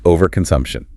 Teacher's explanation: The stress falls hard on the sum syllable.